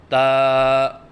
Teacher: حرف ہے تا، مخرج زبان کی نوک اور ثنایا علیہ کی جڑ، اس سے تا ادا ہوتا ہے، یعنی زبان کی نوک جب اوپر والے سامنے کے دانتوں کی جڑ سے لگے تو اس سے تا ادا ہوتا ہے۔ جیسے کہ آپ کو اس نقشے میں نظر آ رہا ہے کہ زبان کی نوک ثنایا علیہ کی جڑ سے لگی ہوئی ہے۔